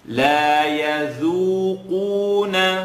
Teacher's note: So the dal is light and the qaf is heavy.